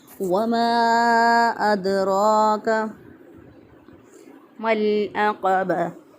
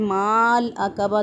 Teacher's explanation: साकिन हरफ को पीछे वाले ज़बर ज़ेर पेश वाले हरफ के साथ मिलाना है तो अलिफ अदा नहीं होगा, तो अगर अलिफ अदा किया गया तो गलत हो जाएगा।